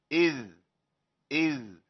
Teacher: رخو لكنه مجهور مقطوع النفس